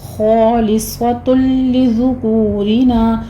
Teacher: را باریک پڑھتے ہوئے آگے الف مدہ ادا کریں گے